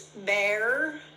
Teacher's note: It's bear with the tongue curled but not touching. Now, if I touch, it becomes an L, but if I don't touch, it's an R, but it's that same position, barely open, tongue curled a little bit, not touching.